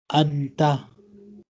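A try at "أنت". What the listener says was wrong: okay.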